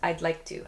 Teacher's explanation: “I’d like” and “I like,” of course, there’s a “D” sound but when native speakers speak quickly, the “D” sound kind of disappears. “I’d like to,” “I like to.” My tongue touches the top of my mouth when I make the “D” sound.